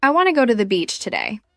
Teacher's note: Notice how I stress the words want, go, and beach.